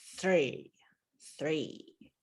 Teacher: this is an unvoiced th so you've gotta stick your tongue out and then yank it back